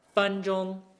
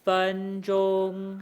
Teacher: my first tone is kind of like holding its place, right? 分 钟. It's not changing or wavering at all.